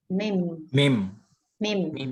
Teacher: itu adalah huruf yang menggunakan dua bibir atau makhorijnya, tempat keluar suara dari huruf mim adalah kedua bibir